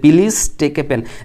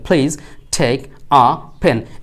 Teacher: article হিসেবে এ যখন থাকবে কোনো বাক্যে, তখন এটাকে উচ্চারণ করবেন আ